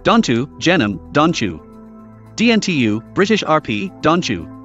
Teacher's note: their T and their J may coalesce to form a new affricate sound, T. This is the first sound that we hear in words like chair.